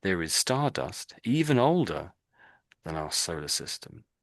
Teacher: So my voice goes up when I got to even older.